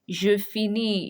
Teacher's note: You are not going to pronounce the S at the end. No, you're not pronouncing the S at the end.